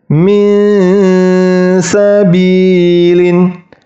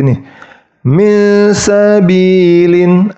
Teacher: Min sabilin itu bacaan yang salah. Jadi bacaan yang benar itu ketika bunyi nunnya hilang langsung masuk ke sin, tetapi sinnya itu harus samar